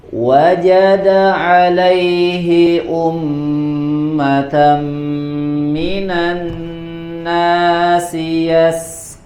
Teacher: Minanna pada nun tasydid, ya, ada tambahan gunnah ditahan. Ya, di kata yasqun, ya, Imam Ibnu Al-Jazari telah memperingatkan sinnya dibaca tipis, ya, tidak terpengaruhi oleh huruf qaf yang ada setelahnya.